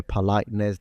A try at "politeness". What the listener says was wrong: Okay, so again, politeness. We've got the glottal stop instead of politeness. Politeness. We've got this going back and forth. Between glottal stop, non-glottal stop.